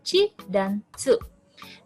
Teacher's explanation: bunyi yang diawali dengan letupan terlebih dahulu dan diakhiri dengan frikatif, yaitu bunyi desah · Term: affricate